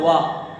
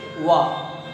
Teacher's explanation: तो दंत होस्ट इससे बोला जाता है वाह। दांत और होंठ दोनों हमारे इस्तेमाल हो रहे हैं, दोनों काम कर रहे हैं मिलकर के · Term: दंत ओष्ठ